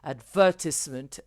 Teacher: elle déplace l'accent en fait de la première syllabe, elle le referme, elle le descend à la deuxième syllabe. Et ça sonne comme de l'anglais.